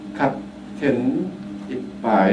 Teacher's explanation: lengthen closure period of plosives